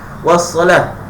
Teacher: mesti waqaf pada ta'ul marbutah, mesti bunyi ha simpul. Wassalah tebal.